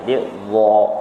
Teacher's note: Iaitu dia macam membulat sedikit kan? Jadi dha kan, pangkal lidah dia terangkat.